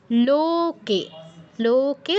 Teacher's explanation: লোকে দুটো লো দীর্ঘ, কেও দীর্ঘ